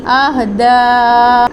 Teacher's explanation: اہدا میں دال کے اوپر کھڑی زبر کے ساتھ ساتھ مد بھی ہے، تو 4 سے 6 حرکات کے برابر کھینچ کے بھی پڑھیں گے۔